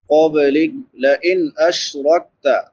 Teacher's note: नून साकिन के बाद हरूफ हल्की में से हमज़ा है, तो यहाँ पे इजहार होगा। इजहार यानी हर्फ को ज़ाहिर करके पढ़ना।